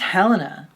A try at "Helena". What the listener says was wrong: No, it's not huh. There is no huh. I know that for sure. They don't pronounce it with an H, babe. Elena. They don't pronounce it.